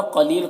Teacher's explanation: قلیل قاف کو پر پڑھنا ہے، لیل میں یا مدہ ہے